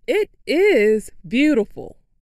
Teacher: makes the word is longer and louder.